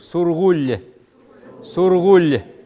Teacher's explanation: Есть редуцированный глас в конце